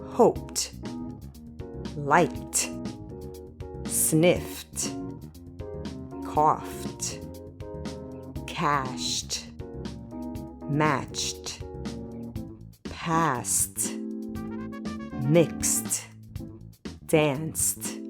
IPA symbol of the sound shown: t